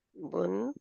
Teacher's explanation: बा दो पेश बुन, क्योंकि जब लिखना है दो जबर डाल के या दो हरकत डबल हरकत डाल के तो उसके अंदर नून है छुपा हुआ, जो कि आखिर में उसकी आवाज आती है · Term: तनवीन